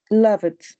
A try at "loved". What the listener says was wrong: Remember, it's not love it because you are adding an extra syllable. No tenemos que agregar una sílaba extra. Es con las mismas sílabas, solo que finalizamos con el sonido de D. In present, love. In past, loved.